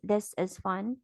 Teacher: this is is at Pitch 2 and fun starts at level 3 and Glides down to level one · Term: two three one